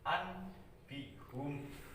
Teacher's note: Nun mati itu dibalikkan menjadi mim mati. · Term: iqlab